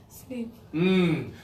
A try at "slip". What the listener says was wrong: Your tongue needs to be lower and breathe out. Slip. Your tongue has to be low. Slip. Yeah, lazy tongue. Slip.